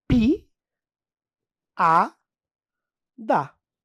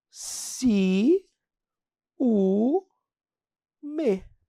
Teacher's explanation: eu tenho aqui o encontro de duas vogais só que elas estão em sílabas diferentes isso aqui é o iato